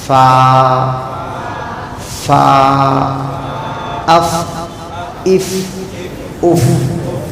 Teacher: فا سامنے کے دو بڑے دانتوں کا کنارہ نیچے کے ہونٹ کے اندر والے حصے لگانا، اندر والے حصے پہ لگانا. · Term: فا کا مخرج